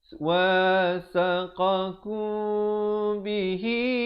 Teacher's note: Di situ ikhfa syafawi. Mim mati bertemu ba, cara bacaannya macam iqlab juga. Sama ada bibir itu kita biar hampir bersentuhan saja.